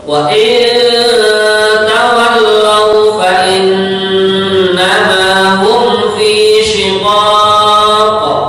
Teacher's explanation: Begitu juga pada kalimat shiqaq ada qaf yang mati karena sukun, maka kita pantulkan atau dibaca qalqalah